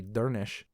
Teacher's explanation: We have a name of another person, DURNISC, and that SC at the end turns into an SH sound, so this is actually Dernish